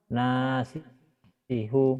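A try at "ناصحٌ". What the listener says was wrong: Pak mantap. Nasihu kayak orang, mohon maaf ya Pak ya, kayak orang Judes gitu. Kekurangannya Bapak di nadanya aja.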